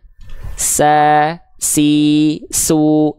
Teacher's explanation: huruf Sin dia punya sifat hams tapi kadarnya mengalir nafas